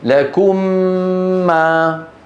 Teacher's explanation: واحده لما ندم الميم مع الميم نقول لكم ما لكم هي اطبق على الميم الاولى ما فتحنا على الميم الثانيه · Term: ادغام